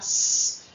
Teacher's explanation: S, es decir, dental fricativa sorda